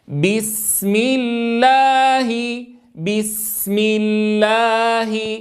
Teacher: ان اعطيها حقها من الرخاوه مع اعطائها حقها من من من الصفير